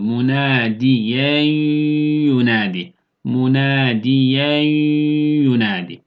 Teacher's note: nun harfi de yaaya dönecek ve gunneli idğam yapıyor · sesi genizden getirerek gunne yapıyoruz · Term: idğam meal gunne